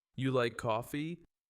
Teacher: But if you say you like coffee, with a falling tone, it sounds like you're stating a fact.